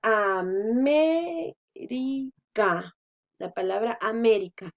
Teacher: Si nosotros al decir América, sabemos que la mayor fuerza la hacemos en me. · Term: esdrújulas